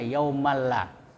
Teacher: Jadi yaumalla, maaf, ini bukan idgham bigunnah tapi idgham bila gunnah, ya. Tanwin ketemu lam, ya, lam. Jadi bila gunnah tanpa dengung, yaumalla, ya, jadi jangan jadi yaumalla, jangan didengungkan tapi dimasukkan, ya.